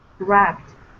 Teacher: The B is a voiced sound.